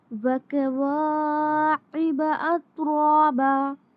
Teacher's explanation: عین کو واضح کرنا ہے اور تا پر قلقلہ نہیں کرنا